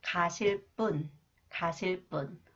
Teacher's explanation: And this one, 비읍, when 비읍 comes after the final consonant 리을 that follows a verb, it is pronounced 뿌, 쌍비읍, 뿌 sound.